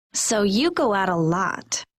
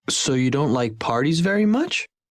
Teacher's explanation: the speaker is sure and the intonation goes down, or you will write C if the listener is checking and you hear the intonation go up. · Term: Being sure